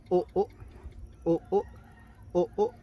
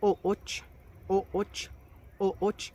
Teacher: Y el último sonido que tiene esta vocal es una rearticulada. Recuerden que es 2 vocales y en medio una glotal. Y le vamos a dar una pequeña pausa entre las dos.